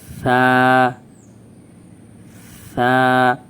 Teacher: জিহ্বার আগা সামনে দাঁতের আঘাত লাগবে।